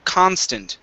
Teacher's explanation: so our stress is at the very beginning of the word